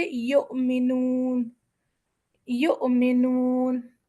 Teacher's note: اب ہم پڑھتے ہیں حمزہ اور عین میں فرق. حمزہ کی آواز میں جھٹکا ہوتا ہے، جیسے یؤمنون، یؤمنون.